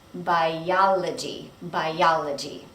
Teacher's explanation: Notice that you're going to link these two vowels.